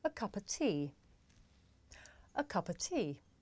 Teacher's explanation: the words a and of become schwa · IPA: /ə 'kʌpə tiː/, ə